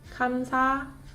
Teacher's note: consonant assimilation happened between 비읍 받침 and 니은 consonant here.